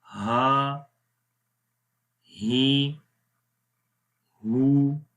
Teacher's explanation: تو ہا کی آواز گلے کے سب سے نیچے والے حصے سے آتی ہے، تو اس کو آپ نے ہا ہی پڑھنا ہے، آ نہیں پڑھنا.